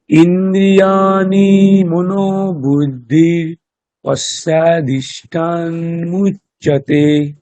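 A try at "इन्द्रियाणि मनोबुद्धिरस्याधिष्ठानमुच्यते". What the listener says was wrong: একটু চেষ্টা করবেন মূর্ধন্য নকারকে মূর্ধন্য নকার বলার। ইন্দ্রিয়াণি নয় কিন্তু ওটা, হ্যাঁ, ইন্দ্রিয়াণি মূর্ধন্য নকার। দন্ত্য ন আর মূর্ধন্য ণ।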